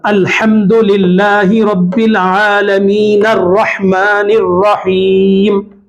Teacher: میں نے کلمے پہ سانس نہیں توڑا بلکہ عالمین کو رحمان سے ملا کر پڑھا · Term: وصل